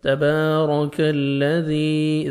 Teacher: ذال کو نرمی سے ادا کر کے 1 سیکنڈ کھینچنا ہے، یا مد ہے، یا ساکن سے پہلے زیر ہے۔